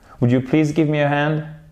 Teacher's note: Là, l'intonation, elle redescend. C'est plus un ordre.